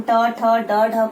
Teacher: हमारी जीभ मुड़कर बाहर, झटके से बाहर आती है ना, मुड़ती है और झटके से बाहर आती है। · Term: मूर्धन्य वर्ग